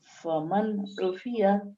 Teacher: نون ساکن کے بعد عین آیا ہے تو اس نون کی آواز کو جلدی ظاہر کر کے بلا غننے کے ادا کریں گے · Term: اظہار